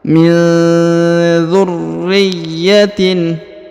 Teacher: Kemudian huruf ra ditahan dan ditekan karena terdapat tanda tasdid ya